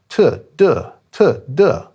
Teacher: For t, the tongue's slightly more forward when it hits the roof of the mouth. In phonetics, they're both called alveolars. Means the tip of the tongue flicks against the alveolar ridge.